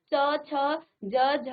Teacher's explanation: जब आप च छ ज झ यूं करते हैं तो तब आपकी जीभ आपकी तालु को स्पर्श कर रहा है।